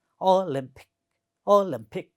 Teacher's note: The next word is Olympic, and if you look at this word, it has also 3 syllables, and the second syllable is stressed.